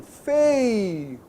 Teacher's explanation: você tem ei, que é um ditongo decrescente